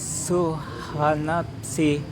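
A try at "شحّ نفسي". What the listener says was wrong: Syuha. Shu. Asya. Syashishu. Nah itu sin Pak. Coba agak ke tengah lagi coba. Ayya. Aish coba. Syu. Nah, syuha nafsi. Nafsi. Nafsi. Ini memang ketemu huruf susah ini Pak ya. Habis ha ketemu fa, ketemu sin lagi, habis ketemu ha. Syuha nafsi. Fa-nya Pak. Fa-nya sama shin-nya tadi. Tinggal fa-nya Pak.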